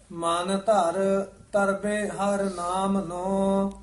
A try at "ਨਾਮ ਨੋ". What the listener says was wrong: ਹਾਂਜੀ, ਨਾਮ ਨੂੰ ਪਾਠ ਇਕੱਠਾ ਨਹੀਂ ਕਹਿ ਦੇਣਾ, ਲਮਕਾ ਕੇ ਬੋਲਣਾ ਹੈ। ਮਨ ਧਰ ਤਰਬੇ ਹਰ ਨਾਮ ਨੂੰ।